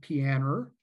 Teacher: She pronounces terminal vowels with an R, like pianer